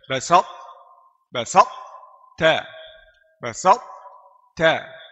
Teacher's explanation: Kesalahan yang ketiga banyak juga ini baca dengan saktah putus suara di antara ta dan ta · Putus suara di antara ta dan ta. Jadi baca karena dia susah naik pakai ta, turun pakai ta, jadi saktah sedikit, putus sedikit.